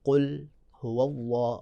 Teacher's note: قل شروع میں قاف ہے، موٹا پڑھیں گے